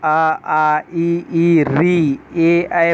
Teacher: आपका होठ जो है वृत्त का आकार नहीं लेगा